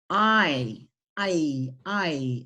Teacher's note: vowel sounds combined your mouth has to go to two different places so let's take a look at the diphthong sounds oi look